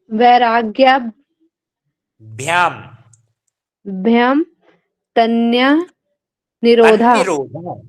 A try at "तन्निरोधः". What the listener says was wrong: तन्निरोधः। तन्ना ना पूरा नहीं करना आपको, उच्चारण ना आधा है तो कैसे करना है? तन्निरोधः।